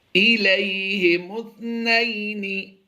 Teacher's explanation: مس کی آواز نہیں دیں گے، سین کی سیٹی نہیں ہم ادا کریں گے، بلکہ یہاں پر تا ادا کرتے ہوئے ہم نے بڑی نرمی سے اسے ادا کرنا ہے